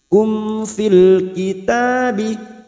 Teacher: mim sukun bertemu fa idhar safawi dibaca jelas tanpa mendengung